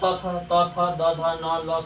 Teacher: त थ और ल स का उच्चारण होता है दंत से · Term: दंतय वर्ण